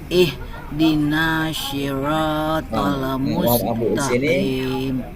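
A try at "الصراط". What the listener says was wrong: Sod bunyinya nggak boleh ihdina shi. Tidak boleh bunyi shi. Harus bunyi soi. Soi. Itu campuran dengan sod. Nah, ini posisinya bibirnya diam saja.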